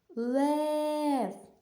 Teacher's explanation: Лев наголос припадає на голосний звук е